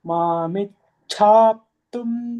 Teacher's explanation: Mamichhaptum, again the cha is Mahaprana.